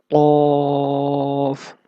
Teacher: Qaf comes out when the raised back portion of the tongue touches the soft part of palate.